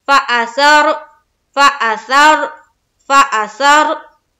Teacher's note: रा को मोटा करके पढ़ेंगे, यानी कि पूर करके